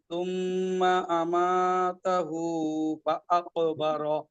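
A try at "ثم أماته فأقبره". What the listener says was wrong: একটু ওয়াজিব গুণাটা একটু ধরেন, হ্যাঁ। দুই আলিফের কম হয়ে গেলে তো আসলে সমস্যা, দুই আলিফের বেশি হলে সমস্যা নাই, কিন্তু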